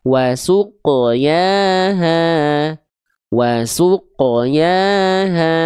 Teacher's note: Karena qof itu selalu dibaca tebal ketika dia dalam kondisi sukun. Jadi bukan wasuq tapi wasuqo ya.